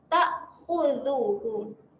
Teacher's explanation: jaga makhraj, keluarkan lidah sedikit